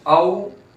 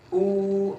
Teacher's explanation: वाव साकिन से पहले जबर तो औ नरमी के साथ, औ खींचे बगैर, और उ वाव साकिन से पहले पेश आया तो वाव मद्दा हुआ, तो इसको एक अलिफ के बराबर खींचेंगे